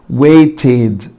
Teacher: طيب تعال نشوف الكلمة اللي تحتها، waited. waited النهاية تي فبعدها الاي دي بتنطق اد، فتبقى waited بالمنظر ده حبيبي.